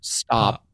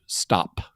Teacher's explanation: you got to overcome that pop filter exactly here here in here in the Ozarks we actually tend not to pronounce uh the the little explosive effect after final plosives like that so I would just say stop instead of stop yeah I